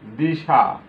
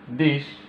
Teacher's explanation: অন্তে যে স্বরধ্বনি ছিল, স্বরবর্ণ ছিল, সেটি লোপ পেয়েছে। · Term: অন্ত স্বরলোপ